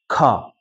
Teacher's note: यो ख पनि ख हत्केलामा सास आउने गरी ख